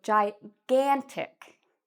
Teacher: notice the stress or the part we say louder and longer is on the gan